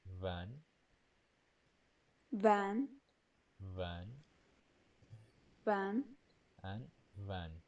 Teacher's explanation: the upper teeth lightly touch the lower lip, and air escapes through the gap, creating friction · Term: labiodental